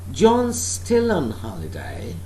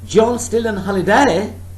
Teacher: this is said with the rising pitch means it's a question · so this is said with a rising pitch, means it's a question which needs answering. When there is the rising tone at the end, that means the speaker wants the answer to that particular utterance or question, whatever.